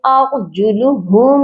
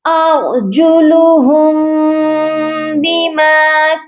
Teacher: کیونکہ آگے با ہے، تو یہاں پر ہم میم پر اخفا کریں گے، اخفاء شفوی ہوگا